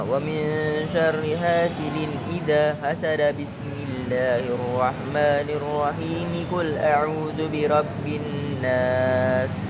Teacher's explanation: Nah, ini disambung semua. Jadi tidak ada yang diwakafkan di akhir suratnya maupun di akhir bismillah.